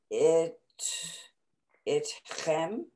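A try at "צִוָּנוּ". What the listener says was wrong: It's a tzadi.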